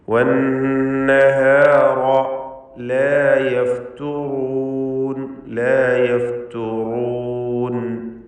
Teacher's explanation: വന്നഹർ എന്ന പദത്തിലെ നൂൻ മുഷദ്ദദ, ഷദ്ദുള്ള നൂനിനെ മണിക്കണം, രണ്ട് ഹറക്കത്തിൻ്റെ അളവിൽ ഉന്നത്ത് കൊടുക്കുക. വന്നഹാറ, റാഇന് പൂർണ്ണമായ തഫ്ഖീമാണ്, തടിപ്പിച്ച് റാ ഉച്ചരിക്കണം. മലയാളത്തിലെ റാ മതിയാവുകയില്ല, റാ എന്ന് തഫ്ഖീമോടുകൂടി തടിപ്പിച്ച് പറയാം.